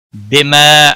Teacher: بما الف مدہ ہے ایک الف کے برابر کھینچ کر پڑھیں گے